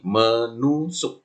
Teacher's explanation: Misal kata dasarnya tusuk mendapat me, gitu kan, berubah menjadi men, sehingga t-nya luluh, hilang menjadi menusuk, gitu.